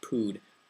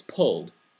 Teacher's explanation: the double l in english disappears in scots